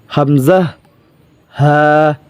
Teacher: এক নাম্বার মাখরাজ হলকের শুরু হইতে · 1 নম্বর মাখরাজ, হলকের শুরু হইতে হামজা হা। হলকের শুরু থেকে হামজা হা উচ্চারিত